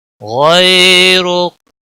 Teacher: غین کو موٹا پڑھیں گے، حروف مستعلیہ میں سے ہے، غی یا لین ہے، تھوڑا نرمی کے ساتھ کھینچ کر پڑھیں گے۔ را کے اوپر پیش ہے اس لیے پر پڑھا جائے گا، موٹا پڑھا جائے گا، اور رکنے کی صورت میں کاف ساکن ہوگا۔ · ولا الہ غیرک، غیرک، غین کو موٹا پڑھیں گے، حروف مستعلیہ میں سے ہے، غی یا لین ہے، تھوڑا نرمی کے ساتھ کھینچ کر پڑھیں گے۔ را کے اوپر پیش ہے اس لیے پر پڑھا جائے گا، موٹا پڑھا جائے گا